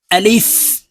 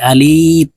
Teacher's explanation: এই আলিফ উচ্চারণ করার সময় উপরের দাঁত নিচের ঠোঁটের সঙ্গে লাগিয়ে তাড়াতাড়ি করে উচ্চারণ করতে হবে আলিফ আমরা অনেকেই দেরি করে উচ্চারণ করি এভাবে টেনে উচ্চারণ করে